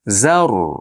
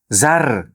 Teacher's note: Orzni yg'on qilish esdan chiqmasin. Chunki ro harf oldida dommalik yoki fathalik kelsa yug'on bo'ladi.